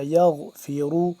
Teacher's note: غین کو بھی موٹا کر کے پڑھیں گے